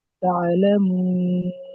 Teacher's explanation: হরফে মাদ্দের উপর থেমেছি, এই জন্য এটা আরজি ওয়াক্ফি। একে 3 থেকে 4 আলিফ পরিমাণ টান দিয়ে পড়ে।